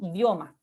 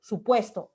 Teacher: La U, la I se pronuncian de manera muy rápida, de manera como auxiliar, digamos, a la otra vocal.